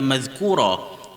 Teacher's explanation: Jadi sepertinya mazkuran dia jadi mazkura, buang satu baris tinggal satu baris.